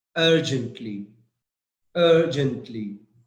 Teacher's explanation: Yes, the stress is on UR. That's right, UR.